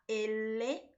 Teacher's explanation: la lengua se sitúa en el centro superior de la cavidad bucal provocando la salida del aire por sus laterales